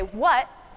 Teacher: me say what it's the special s uh symbol that means glottal stop it's being cut off in my throat